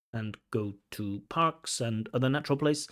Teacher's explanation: we have like a bit of hesitation followed by quite rapid speech